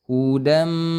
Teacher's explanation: Tanwin itu seperti bunyi nun, hudan asalnya, tapi karena bertemu dengan huruf mim, maka dia melebur menjadi suara mim. Hudam, kemudian ditahan dulu 2 harokat. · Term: idgham bi gunnah